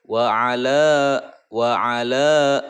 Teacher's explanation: mad tabi'i ya, mad asli dibacanya dua harokat. Ala, ala, dua harokat, dua ketukan.